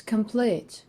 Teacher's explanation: This word consists of two syllables, but the stress falls on the last one.